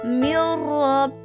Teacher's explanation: memasukkan dan tidak mendengung. Jadi langsung masuk ke huruf ro ya. · maka dibacanya dengan memasukkan atau mentasydidkan tanpa mendengung. Ada 2 huruf idgham bila gunnah yaitu lam dan ra. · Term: idgham bila gunah